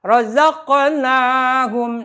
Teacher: na-nya panjangkan, mad tabi'i 2 harkat